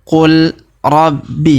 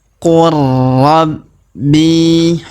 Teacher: huruf la yang berharakat sukun ini melebur masuk ke huruf ro yang berharakat tasdid · Cara bacanya qur rabbi, perhatikan qur rabbi, jadi bukan dibaca qul rabbi ya, tapi qur ya, huruf la yang sukun ini tidak dibaca lagi ya, karena sudah melebur ke huruf ro yang berharokat tasdid ini ya, maka kita baca qur rabbi.